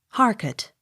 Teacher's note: accent on first syllable